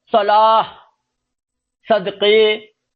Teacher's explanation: یہ سواد سے ہیں، لیکن آواز سا کی نکل رہی ہے، سننے والا سا ہی سمجھے گا